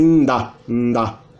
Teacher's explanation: No caso de N seguido de A, como o A não é nasal, a gente tem nda, nda.